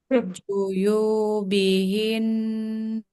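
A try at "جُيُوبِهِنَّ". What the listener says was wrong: Ya. Kurang lebih seperti itu durasinya segitu.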